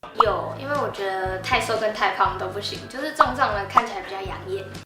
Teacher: 这句话里的有、我、起、比、眼也是半三声